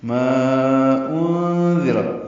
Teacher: ما میں الف مدہ ہے اور اس کے بعد حمزہ ہے تو مد منفصل، چار حرکات لمبا کر دیں